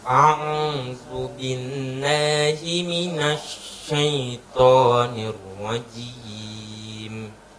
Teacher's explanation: huruf shinnya itu tadi punya sifat tafashi. Anginnya mengumpul.